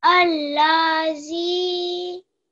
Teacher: You made sure that your Zal is long for 2 seconds.